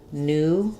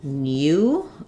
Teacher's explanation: In British English, they may say new, so they have a gliding y sound in there like we do in the word few. But in American English, when the u is after an n, we typically drop this y sound.